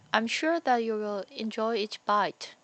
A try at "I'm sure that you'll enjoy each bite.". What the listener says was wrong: Again, the contraction part. Don't separate that. One more time.